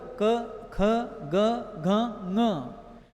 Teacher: ऐसे पाणिनि व्याकरण में कुछ सूत्र आते हैं, अकूह विसर्जनीयानाम कंठः, मतलब अ आ, ये दो स्वर, और क वर्ग, क ख ग घ ङ, इनका उच्चारण कंठ से होता है